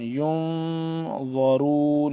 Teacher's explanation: اس پہ ہم اخفا کریں گے کیونکہ نون ساکن ہے